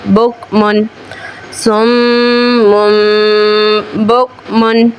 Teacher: बाद हर्फ बा है छोटा मीम भी बना हुआ है यानी तनवीन की आवाज को मीम से बदलकर इफा यानी गुन्ना करके पढ़ना है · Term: इकलाब